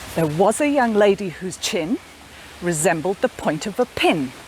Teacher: 3 of the lines have 3 stressed words, and 2 of the lines have 2 stressed words. · the words in between are kind of pushed together and brushed over quickly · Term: connected speech